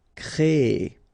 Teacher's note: So technically you will have this double E sound. Créer. Okay, so it's longer.